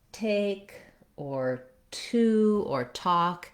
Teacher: So when I'm saying something like take or to or talk, in American English, I need to have a puff of air come out. If I say take, I should actually be able to feel the air on my hand.